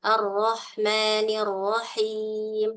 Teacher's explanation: ngangkat nah di situlah eh pentingnya kita tahu makhraj ya Ee itu bukan vokal o tapi lidah belakangnya terangkat